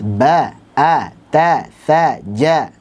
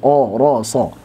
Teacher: Untuk yang fathah berbunyi A pada huruf yang tipis dan berbunyi O pada huruf yang tebal.